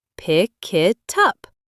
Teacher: The k sound at the end of pick jumps onto it, making it sound like kit. And the T from it jumps onto up, making it sound like tup.